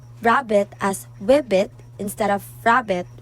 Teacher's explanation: a child might say rabbit as wibbit instead of rabbit, replacing the liquid r with the glide w